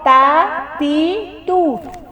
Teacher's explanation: تا کو موٹا نہیں پڑھنا، تو نہیں پڑھنا